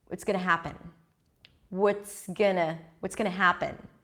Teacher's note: happen sticks out everything else is reduced